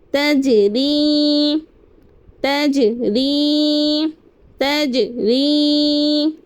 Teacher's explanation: جیم پر قلقلہ کریں گے, جیم حروف قلقلہ میں سے ہے